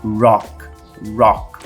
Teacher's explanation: som do R enrolado R retroflexo É também um som do inglês característico do inglês que não é tão comum no português